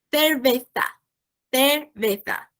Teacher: para pronunciar o TH, você bota a língua entre os dentes, a parte de baixo e a parte de cima, superior e inferior.